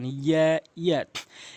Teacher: এরপরে রয়েছে হচ্ছে ইয়া ইয়া ইয়া ইয়া, এটি হচ্ছে একালিপ করে টেনে পড়বেন এবং জিব্বার মাঝখান থেকে উপরে তালুর সঙ্গে লাগিয়ে উচ্চারণ করবেন